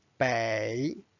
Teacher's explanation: bay is a direction means north bay notice it's the third tone